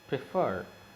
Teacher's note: The stress falls on the second syllable, yes, where there is a last consonant letter and preceded by a vowel.